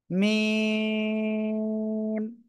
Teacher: এই যে দুই ঠোঁট, দুই ঠোঁটের শুকনো অংশ বা বাইরের অংশ থেকে, এই যে মিম।